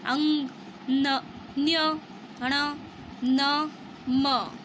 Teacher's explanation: नासिका के साथ इनका क्रमशः कंठ, तालु, मूर्धा, दांत तथा ओष्ठ के स्पर्श से होता है, अतः इन्हें नासिकीय व्यंजन कहते हैं।